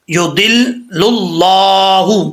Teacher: اللہ کے لام سے پہلے پیش ہے تو اللہ کا لام پر پڑھا جائے گا